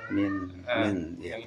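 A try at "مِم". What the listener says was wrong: Mim, Ya, mim, min. Cuman bacanya bukan min. Min. Bacanya mim sama karena ketemu huruf ba di dalam. Mim ya. Bacanya sama.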